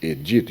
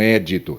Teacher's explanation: Aqui no caso das leis, porque não há o acento, é edito. Veja só, edito e não édito, é edito, porque a lei seria paroxítona